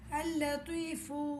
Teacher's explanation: لام خاموش ہو کر دوسرے لام سے مل جائے گا